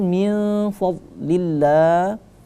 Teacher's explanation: min di situ tidak kita baca min tapi min sama-samar karena ikhfa ya. Nun mati bertemu dengan huruf fa.